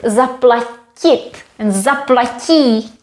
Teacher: But we don't like this t at the end because when you see this verb zaplatit and zaplatí, there is a sound q, although it is spelled with t, but the I, the soft I, měkké I, helps the T to become soft, q. So we spell it differently but pronounce it like q because of the following I, which we lose when we make the imperative.